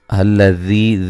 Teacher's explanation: ذی یا مدہ ہے اور ذال کو نرم ادا کرنا ہے